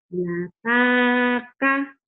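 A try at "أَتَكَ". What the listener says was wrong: Lataka. Kenapa jadi ada lataka? Lam itu nggak bisa nyambung.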